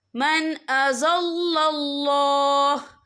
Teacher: यहाँ अल्लाह का नाम पुर पढ़ा जाएगा क्योंकि अल्लाह के नाम से पहले ज़बर है।